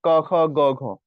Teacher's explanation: এগুলো হচ্ছে মুখের পিছনে কন্ঠের মূলে